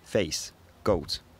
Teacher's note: E, O, face, goat. In Scouse, they tend to be narrow, raising diphthongs, so the tongue gets slightly higher in the mouth while you're saying the vowel. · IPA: [fejs] [gowtᶿ]